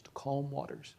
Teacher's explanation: then you'd have stress on the second and third syllables, to calm waters